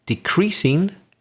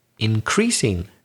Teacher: And then the verb shifts, changes to the second syllable, the stress.